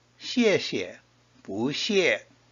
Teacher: 不 followed by a fourth tone changes to a second tone